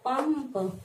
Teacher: तो यहाँ पर क्या हो गया, पंप, यानी उच्चारित करते हैं म की ध्वनि, आधा म की ध्वनि, और लिखते हैं अनुस्वार लगाकर।